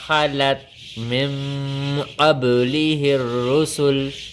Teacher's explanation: نون ساکن کے بعد حروف اخفا میں سے قاف آئی ہوئی ہے، یہاں پر اخفا کا قاعدہ لگے گا، ہم آواز کو ناک میں چھپا کر پڑھیں گے اور ایک الف کے برابر لمبا کریں گے